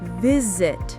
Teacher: That's a verb, but the stress is on the first syllable.